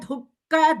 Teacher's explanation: Only Ka is Mahaprana. Du is Alpaprana.